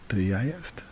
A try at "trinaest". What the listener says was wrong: Trinaest. So we're adding niest. Trinaest. So maybe make those iest, make it flow a little bit smoother. Trinaest. A little bit, yeah, just a little bit like